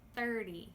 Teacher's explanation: The T here I am actually making more of a D sound! Like Dog! Duh Duh. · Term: sneaky D